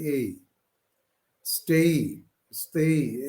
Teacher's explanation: এরপরে একটা ই এর টান দেখবেন আছে, এটা বলে একটু টেনে বলে এবং ই এর দিকে উঠে যায়।